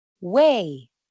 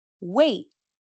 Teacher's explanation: Una que termina con la vocal y la otra con una consonante plosiva detenida.